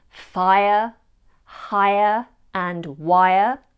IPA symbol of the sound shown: aɪə